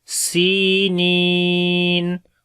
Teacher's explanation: تو پہلے والا تقریباً 1 الف کے برابر اور دوسرا جو ہے وہ 2 الف کے برابر لمبا کرتے ہیں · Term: مد عارض